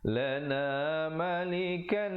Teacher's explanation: hukumnya idgham bi gunnah, masuk dengan dengung, masuk berserta dengung ya, dengan kadar panjang 2 harakat